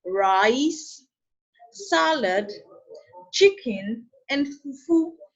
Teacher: And when you list, the tone of your voice rises. · as we list each item here, the tone of our voice is raised to indicate suspense. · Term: rising tone